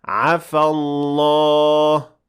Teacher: The alif at the end of عفى will be dropped if you keep on reading, and you should say عفى الله.